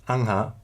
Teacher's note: First, an H sound between two A or two A vowels developed an uvular nasal, so that original aha came to be pronounced angha